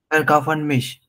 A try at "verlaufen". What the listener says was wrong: Not kau, verlaufen, not verkaufen, verlaufen. Not verlaufen, because you have to conjugate it for the subject.